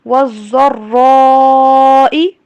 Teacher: ضاد کو اور را کو موٹا پڑھیے.